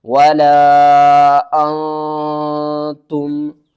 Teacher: نون کے اوپر ہم نے اخفا کرنا ہے، یعنی کہ نون کی آواز کو چھپا کر پڑھنا ہے